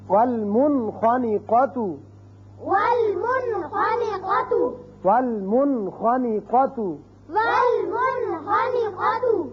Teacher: نون ساکن کے بعد اگر ایک کلمے میں آئے تو یہاں اس کا اظہار ہوگا